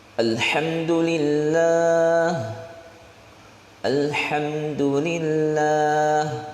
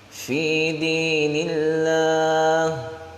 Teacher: Lafaz Allah dibaca tipis itu karena sebelumnya berharakat kasrah. Huruf sebelum lafaz Allah itu berharakat kasrah, akhirnya dibaca tarqiq atau tipis.